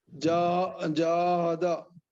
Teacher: جاہدہ میں جا کھینچنا ہے، ہادا جلدی پڑھنا ہے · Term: الف مدہ